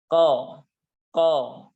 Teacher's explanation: huruf qaf itu huruf isti'la karena huruf qaf suaranya naik ke atas ko ko ya suaranya naik ke langit-langit mulut kita dalam kata